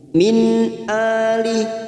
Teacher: nun sukun bertemu hamzah idhar halki kita baca jelas tanpa mendengung